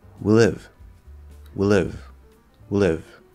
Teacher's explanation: drop that vowel completely we live we live we live so i'm going straight from the w into the l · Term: eat that vowel